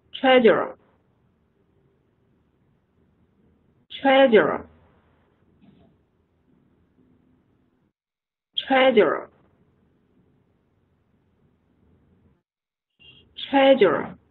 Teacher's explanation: 的意思，它是动词。好，我们看一下第三个单词，第三个单词是指会计、财务主管。Treasurer把它分成三段▁Treasurer▁重音在前面第一个音节▁Treasurer▁Treasurer， 然后音调是从高往低走